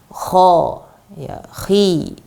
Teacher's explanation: kita lafadzkan huruf-huruf ini dengan menaikkan lidah belakang